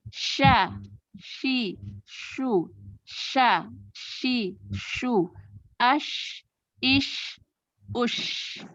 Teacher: Dengan menempel tengah lidah ke langit-langit mulut. Nah, ini juga ada sifat tafashi, berarti udara menyebar di seluruh rongga mulut.